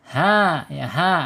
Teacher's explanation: ha ini makhrajnya ada di tenggorokan bawah